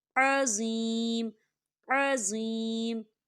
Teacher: عظیم یا ساکن ہے، یا ساکن سے پہلے زیر ہے، یہاں پر یا مدہ ہو رہا ہے تو اسے 2 حرکت کے برابر کھینچیں گے